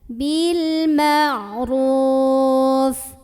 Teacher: Ra-nya ini dibunyikan secara tafkhim karena ra ada baris dan barisnya di atas. Jadi bacanya tebal, pangkal lidah kita dinaikkan.